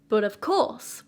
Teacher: So 3 syllable sound with a stress on the last one. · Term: Anapest